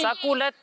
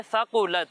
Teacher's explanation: सा में सीटी की आवाज़ नहीं आएगी, ठीक है। सा में सीटी की आवाज़ नहीं आएगी, सकुलत नहीं पढ़ना, इसे पढ़ना है सकुलत।